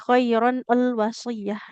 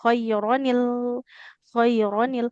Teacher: Makanya bunyi nun sukun di tanwinnya diubah ke jadi nun kasroh